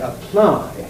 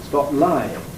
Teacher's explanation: you can hear how this p is not aspirated it's probably glot reinforced